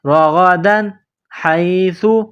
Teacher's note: تنوین کے بعد حروف حلقی ہے، ہا ہے تو یہاں تنوین پر غنہ نہیں کریں گے